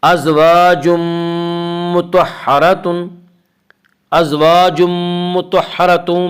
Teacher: ازواج مطہرۃ میں یہاں پہ ادغام بالغنہ ہوگا